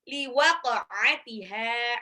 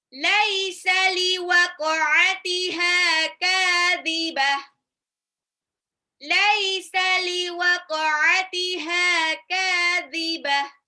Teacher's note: ainnya diperjelas, ha-nya 2 harokat, ka-nya juga 2 harokat. Kadhibah. Tak marbuta di belakang menjadi ha sukun.